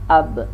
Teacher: ba ini termasuk syiddah, tertahan ya, tertahan, dan dia pun qalqalah. Kalau kita sukunkan jelas ab, mentul.